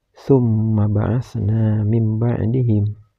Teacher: Huruf mim yang bertasdid ini harus dibaca guna, yaitu dibaca dengung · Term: gunnah